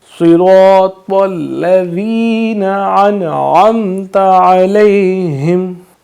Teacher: صراط الذین انعمت علیہم، آئین کو واضح کریں گے، ذال میں سیٹی کی آواز نہیں آئے گی